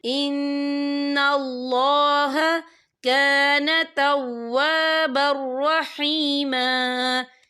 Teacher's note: یا دیکھیں کان توابر، با کے پر تنوین، تنوین کے بعد جو ہے را آ رہا ہے اور را جو ہے حروف یرملون میں سے ہے تو یہاں پر ادغام ہوگا تو ہم اسے بنا غننے کے پڑھیں گے.